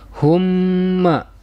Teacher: Ini nama hukumnya adalah idgham mimi, sebab mim sukun bertemu dengan huruf mim.